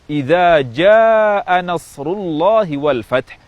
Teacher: Ja'a seharusnya diucapkan dengan panjang mad yang lebih dari dua harakat